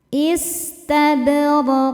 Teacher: Huruf ba sukun hukumnya qalqalah sugro karena ada huruf qalqalah di tengah-tengah bacaan ya dan bnya ini sukunnya sukun asli maka kita pantulkan bnya dengan pantulan yang kecil istabadroq huruf ro dibaca secara tafkhim karena berharakat fathah maka dibacanya tebalqu ketika berhenti di sini hukumnya adalah qalqalah kubra karena ada huruf qalqalah yaitu qof yang sukunnya karena berhenti ya tadinya tanwin kasrah maka dibaca dengan pantulan-pantulan yang besar.